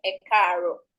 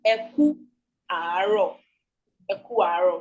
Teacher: So everything joins together to become ekaro. But in the basic formation, in the underlying structure, it is eku aro.